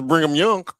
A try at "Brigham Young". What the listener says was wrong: Brigham. There's not no N in it. It's Brigham.